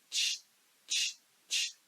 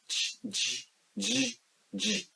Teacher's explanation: When you have learned the sound of ‘tʃ’, it becomes easier for you to make the sound of ‘ʤ’ because for ‘ʤ’ you need to give tension or pressure in your throat/vocal cords to vibrate it. To learn it we do this - ʤhhh --- ʤhhh ---- ʤhhh which is for ‘ʤ’.